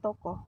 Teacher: bunyi o Tengah bawah belakang bundar apabila berada pada silabel tertutup